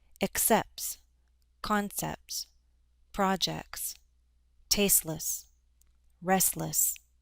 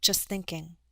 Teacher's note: We often drop the T as a middle consonant sound.